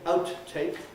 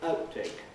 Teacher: When you have an English word ending in a plosive consonant and another word following, it doesn't begin with a vowel, but begins another consonant, then the habitual thing to do is not to release the first consonant. So you don't say outtake, but outtake, and so on.